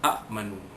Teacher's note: Asalnya amanu. Jadi amanu dibaca panjang dua harakat. nun waw dapat nu mad asli.